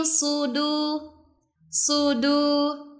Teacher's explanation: huruf shad makhrajnya ada di ujung lidah bertemu dengan gigi bagian bawah. Jadi bacanya jangan dimonyongkan.